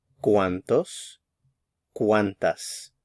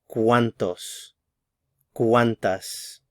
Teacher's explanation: The stress is on the first syllable, cuán.